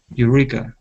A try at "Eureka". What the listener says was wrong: Yep, that was perfect.